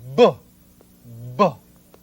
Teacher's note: the sound of the letter B is produced by placing the lips firmly together